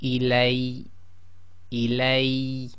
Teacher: you put more emphasis on the ya and cut it down to one long.